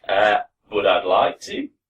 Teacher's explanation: Very rising intonation at the end of sentences in Australian accents.